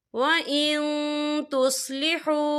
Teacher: नून साकिन के बाद जो है तार है और ता जो है इक्फा का वर्ड है, तो हम यहाँ इक्फा करेंगे, नून साकिन की आवाज़ को नाक में छुपाएंगे।